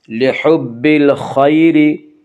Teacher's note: یالین کو نرم آواز کے ساتھ جلدی پڑھیں گے · را کے نیچے زیر ہے تو را کو باریک پڑھا جائے گا